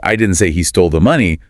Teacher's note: the rising intonation on stole implies maybe he borrowed it or found it.